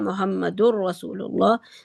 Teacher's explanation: تنوین کے بعد را تھا، ادغام جو ہے وہ ہے بلا غنہ ہے، محمد الرسول اللہ.